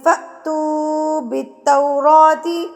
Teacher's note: الف کے اوپر جب یہ جزم آ جاتی ہے تو جھٹکا دے کے پڑھا جاتا ہے